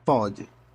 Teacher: Pode, com pronúncia aberta.